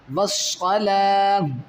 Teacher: اس گول تا کو آپ نے ساکن کرنا ہے، یعنی ہا ساکن کر دینا ہے